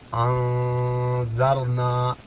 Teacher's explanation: نون ساکن کے بعد یہاں ذال آ گیا، 15 حروفوں میں سے یہاں اخفا ہوگا